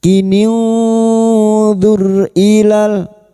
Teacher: ra sukun yang didahului dhammah kita baca tafkim